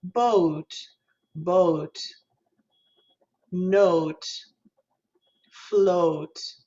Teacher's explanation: this is an o and then uh as in look right the pure o and the uh of look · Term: diphthongs